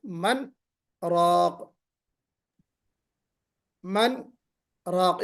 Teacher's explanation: نون کو ظاہر کریں گے نا، من راق، من راق یعنی غنہ نہیں کریں گے یہاں پہ، من جی راق ایسے نہیں پڑھیں گے، من راق ایسے پڑھیں گے۔